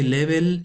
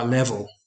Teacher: they might say level with the Spanish e sound instead of the English schwa level